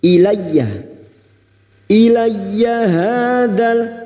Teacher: Ilayya masuk pada huruf ya yang bertasdid, hanya masuk tanpa ditahan lama-lama, tanpa mendengung.